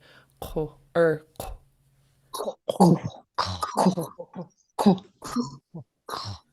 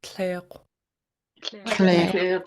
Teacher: you're saying an underlying K with your lips rounded. It makes a very different noise from if it's not there. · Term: underlying KW sound